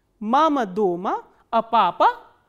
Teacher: in the first part the intonation starts from the medium pitch, it comes down and then again it rises up and then comes down. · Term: fourth intonational construction